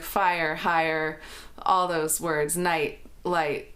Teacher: So that's actually comprised of two vowels, ah and e. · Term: the vowel I